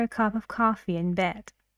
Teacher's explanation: Rising intonation on coffee